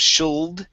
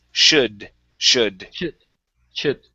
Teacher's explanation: the l is silent we do not pronounce that